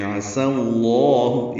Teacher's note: عین وسط حلق سے ادا کریں گے، سین صفیر کی آواز سے ادا کریں گے لیکن پتلی آواز ہوگی · سین غلام اس میں جلالہ سے ملانا ہے، زبر کی وجہ سے لام اس میں جلالہ کو پر پڑھیں گے. عسى اللہ، یہ سین کو صاد نہیں بنانا اور لام کو پتلا نہیں کرنا، موٹا پڑھنا